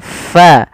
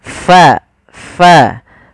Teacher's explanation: Orang Indonesia itu mengganti huruf Fa dengan huruf P ya harusnya Fa Bagaimana cara melafalkannyaalah ada angin yang dikeluarkan karena